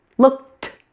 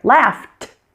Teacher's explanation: You also notice there's a puff of air coming from my mouth with the ED sound being a T.